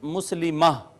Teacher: اگر گول تا آخر میں آ جائے تو وہ وقف کی حالت میں ہا رہ جاتی ہے، جیسے مسلمتن مسلمہ رہ جائے گا۔